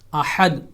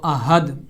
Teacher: ہا کا مخرج صحیح طور پہ ادا کیا جائے گا، جو حلق کا درمیانی حصہ ہے، وسط حلق کا مڈل آف تھروٹ ہے